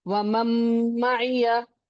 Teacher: And one more very important thing, there is a no sukoon sign on noon as well, right? So noon has no sign and the sifat and makhraj merges completely. This is complete idgham with gunna.